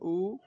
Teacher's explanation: দেখো জিভের পেছন দিকে আসে, এই জন্য পেছনে উঁচু হবে। আর উ যখন বলি তখন আমাদের ঠোঁটটা গোল হয়ে যায়, আর তখন অল্প পরিমাণে খুলে থাকে।